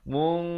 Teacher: Ra di sini dibacakan tebal.